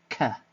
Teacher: the tongue is touching the soft part of the roof of the mouth which is called the Vela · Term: velar plosive